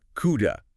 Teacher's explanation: the D in coulda isn't a hard D, it's a flap. It sounds like a Spanish R, coulda.